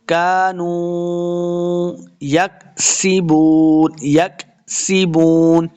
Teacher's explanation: کانو یکسبون، اس کاف کو بھی موٹا نہیں کریں گے، سین پہ سیٹی کی آواز آئے گی. یکسبون، وہ مد ہے، اس کو دو حرکات لمبا کریں گے اور آخر کے اندر ہم نے وقف کرنا ہے تو نون کی آواز آنی چاہیے.